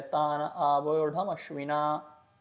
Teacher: अवग्रह से पहले वाला शब्द ना में आ जो है ह्रस्व है, स्वर कम काल का छोटा उच्चारण, अवग्रह के बाद का स्वर आ आवोढम में, दीर्घ स्वर लंबा और स्पष्ट उच्चारण। इस प्रकार वग्रह से पूर्व ह्रस्व, अवग्रह के पश्चात दीर्घ, तो यह बन गया वत्सानुसृता।